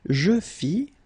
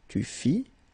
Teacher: final S not pronounced